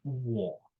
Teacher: you have a mid-vowel in the core in both cases, but the quality, whether it's front or whether it's rounded, is in part determined by the on-glide. It's like the on-glide moves into the core and says, let me give you my property too, let me make you round or let me make you front.